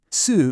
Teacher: Su, meaning 4, uses the 4th tone. It falls sharply.